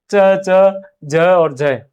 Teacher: स्पर्श का समय अधिक होता है, हवा रगड़ते खाते हुए बाहर आती है, और ज्यादा देर टच होगी तो भार बढ़ेगा, इसके ऊपर घर्षण बढ़ेगा तो वो रगड़ते हुए बाहर आएगी। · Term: स्पर्श संघर्षी व्यंजन